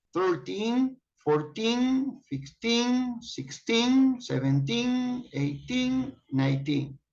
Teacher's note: If you listen carefully, you notice that after 13 to 19, the accent is on teen.